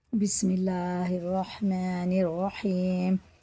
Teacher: را پر ہے اور اللہ کا نام بھی پر ہے، دونوں کو موٹا کر کے منہ بھر کے پڑھیں گے